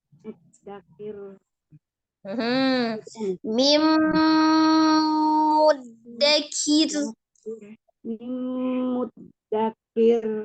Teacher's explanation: Ya, jadi roknya tipis kir, tapi dia tetap ngalir. Ada alirannya kir, ada sedikit, ada kir, gitu ya.